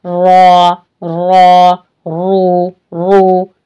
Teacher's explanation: रॉ पर जब जबर हो और पेश हो तो इसको मोटा पढ़ेंगे, तो इसको फिर ऐसे ही होगी, जबान ऊपर की तरफ जाएगी।